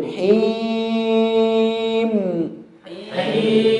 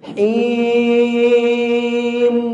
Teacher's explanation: Nggak kuat yang dari hidung. Maka maksimalkan dari mulut kecuali mim. Pas mim baru dari hidung.